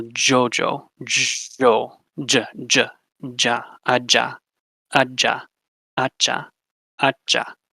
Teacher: And then next you have affricates, which are almost like a combination of a stop and a fricative. So first you stop the air, then you add some friction and release it